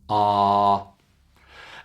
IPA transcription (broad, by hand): ɑː